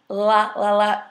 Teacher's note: See, when I'm making the L sound, la, la, la, your tongue actually touches the back of your teeth